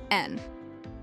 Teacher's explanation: the N with a voiced alveolar nasal, N.